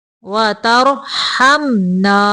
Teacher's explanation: را کو موٹا پڑھیں گے ساکن کرتے ہوئے